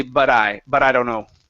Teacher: we flip the te into what's called a flap te and we combine our words together